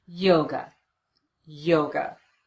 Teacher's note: the second syllable is unstressed we replace the letter A with the unstressed vowel the uh sound and we get away from that syllable as quickly as we